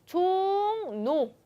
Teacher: 종로할 때 종노 해서 리을이 앞에 있는 이응의 영향을 받아서 비음화 현상으로 니은이 되고 있죠. 그래서 종노 이렇게 되는 것까지 음운 변화를 잘 반영해서 써줘야 합니다.